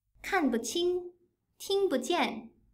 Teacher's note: when 不 bù forms part of potential complements, it also becomes neutral. · For example, in 看不清 kànbuqīng, 听不见 tīngbujiàn, 不 bù is short and light. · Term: neutral tone